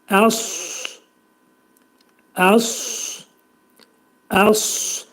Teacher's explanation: Sonra sot hərfi gəlir bizdə. Sa hərfinin məxrəci dilin kökü yuxarı qaldırılaraq dolu şəkildə sat hərfini deməliyik. Əs şəklində deyirik. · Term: sod hərfi